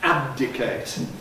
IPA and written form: ˈæb̚dɪkeɪt (abdicate)